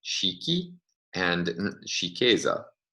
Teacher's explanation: in the basic form the stress is on the first syllable in the derived form it's on the second syllable so no longer on the vowel that belongs to the root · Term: position of the stress